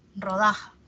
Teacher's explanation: la mayor fuerza de voz está en da